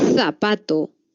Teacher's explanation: se producen cuando la lengua está entre los dientes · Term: interdentales